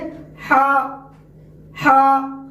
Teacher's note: ہا کا مخرج ہے جو ہے وسط حلق، یعنی حلق کا درمیانی والا حصہ